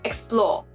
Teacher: The stress is on the second syllable, explore, on the splore.